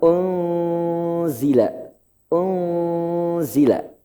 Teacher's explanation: Di situ nunnya, huruf nunnya, n-nya harus samar. Enggak boleh n-nya jelas. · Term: ikhfa